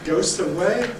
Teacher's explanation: If I say goes away, that's wrong. Why? Because the voicing is missing. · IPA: [gəʊs]